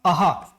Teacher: इसका उच्चारण सामान्यतया ह के रूप में होता है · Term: विसर्ग